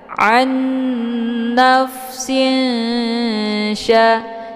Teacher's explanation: Jadi, ikhfad ini cara bacanya pertama tanwinnya disamarkan kemudian siap-siap menuju ke huruf sya ya sambil didengungkan · Jadi nun sukun dengan huruf sya itu makhrajnya tidak terlalu dekat juga tidak terlalu jauh, ya. Nun posisinya ujung lidah, sementara sya posisinya adalah di tengah lidah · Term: ikhfa ausat, ikhfa awsat